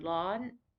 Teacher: this is a high tone it gets a little bit higher than it begins but it's just high the whole time